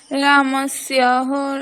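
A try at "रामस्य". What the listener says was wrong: রামস্য হা নেই কিন্তু, রামস্য।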